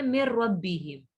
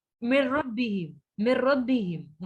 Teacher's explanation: میم ساکن کو ڈائریکٹلی ہم ربہم کے را کے ساتھ جوائن کرتے ہیں اور غنہ نہیں کرتے، حالانکہ وہاں پہ نون ساکن کے بعد حروف یرملون میں سے ورڈ آ رہا ہے، یرملون میں سے، یرملون، لیکن وہ را ہوتا ہے یا لام ہوتا ہے. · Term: ادغام بلا غنہ